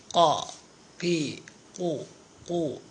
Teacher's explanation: നാവിൻ്റെ മുരട്ടിൽ നിന്ന് മേലെ അണ്ണാക്ക്, അതായത് നമ്മുടെ ചെറുനാവ്, വായ പൊളിച്ചാൽ ആ തൂങ്ങി നിൽക്കുന്ന ചെറുനാവിൻ്റെ അടുത്ത് നിന്നാണ് ഖാഫ് വരേണ്ടത്.